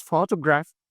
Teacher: And you find that a lot of people like saying something like photograph and stressing like all the words. The word is photograph, stresses in the first syllable.